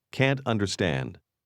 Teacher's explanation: Can't understand with a falling tone is what makes that negative.